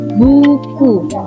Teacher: vokal yang dibentuk dengan lidah diangkat setinggi mungkin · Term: struktur tertutup